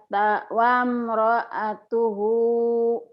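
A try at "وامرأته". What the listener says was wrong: Dihentikan jadi wamro'atuh. Wamro'atuh.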